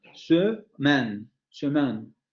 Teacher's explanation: en la primer sílaba de la palabra, aparece el fonema medio central labializado. Según esta regla, aquí sí se tendría que pronunciar porque es la primera sílaba de la palabra.